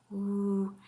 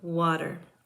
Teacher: The woo sound is a voiced velar glide.